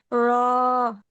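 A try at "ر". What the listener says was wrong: রটা একটু মোটা হবে আপু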